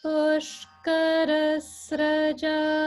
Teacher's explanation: the upper swara is on the ka.